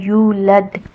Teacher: ولم یولد، یا کے اوپر دمہ ہے، میں نے آپ کو پہلے بتایا تھا کہ ایسا واؤ جس سے پہلے والے حرف کے اوپر دمہ ہو تو اس کو واؤ مدیہ کہتے ہیں، تو یہ واؤ مدیہ ہے تو یہاں آپ نے یا کو حرکتین کرنا ہے، یا کو تھوڑا سا دو حرکہ کھینچ کر پڑھنا ہے۔ یولد، دال کے اوپر سکون ہے تو یہاں آپ نے دال کو قلقلہ کے ساتھ ادا کرنا ہے۔